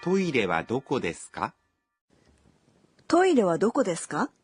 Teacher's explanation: don't forget that we say questions with a rising intonation